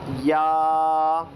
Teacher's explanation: زبان کا بیچ والا حصہ اوپر کے تالو سے لگ کر نکلے گا